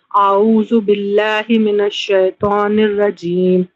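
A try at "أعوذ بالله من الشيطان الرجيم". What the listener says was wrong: देखिए आ को भी मत खींचिए और बिल्लाही के हा को मतलब जेर को ही पढ़िए, फिर से पढ़िए।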